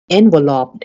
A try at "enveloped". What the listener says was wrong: the accent is on the second syllable enveloped not enveloped